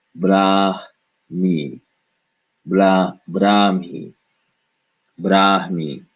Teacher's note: the ha, once again, because there's no vowel following it, is pronounced as a sigh